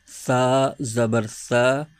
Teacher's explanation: सा का मखर ये होता है कि जबान का सिरा ऊपर के दांतों के अंदरूनी किनारे से अदा करना होता है